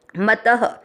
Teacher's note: और म त दोनों अक्षर पूरे, दोनों में अ मिक्स करना है, मत। त में अ की मात्रा तो विसर्ग को पढ़ना है ह,